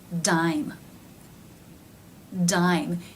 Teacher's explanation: you can see the mouth is taking the shape of the first sound of the eye as in by diphthong even before the d is made drain drain again you can see the lips taking the position